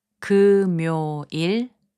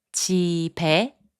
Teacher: When a syllable ends in a consonant and the next syllable begins with 이응, the final consonant sound moves to the next syllable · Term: linking